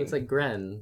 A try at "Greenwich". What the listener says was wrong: It's not Gren. Gren would be Grin. Greenwich. Greenwich.